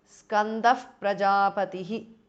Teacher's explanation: Skandaha, Shivaskandaha because of sandhi. Skandaha, visarga changes to upadhamaniya